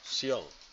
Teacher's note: Y lleva tilde. Es un diptongo. Y se leen en la misma sílaba.